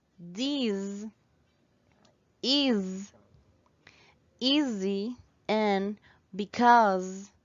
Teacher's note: Words such as this, is, easy, and because are pronounced always with the voiced S sound.